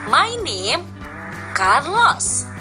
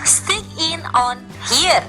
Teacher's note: the most usual intonation pattern in English. Short statement. Short statement usually use falling tone.